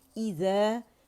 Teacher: الف ممدودہ الف کبیرہ جو ہے وہ ذال کی آواز کو 2 کاؤنٹ کے اوپر کی طرف کھینچ رہا ہے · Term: مد اصلی